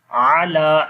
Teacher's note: ain sound correctly read from middle of the throat. Lam we long due to standing fatha on the la.